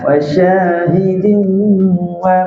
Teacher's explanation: Kalau lidah kat bawah keluar huruf sin dia lawan. Jadi masa kita sebut wasya tu guna tengah lidah kena langit-langit atas. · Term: huruf syin